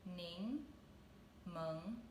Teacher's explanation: together the lemon pepper shrimp so the first word lemon is it's both second tone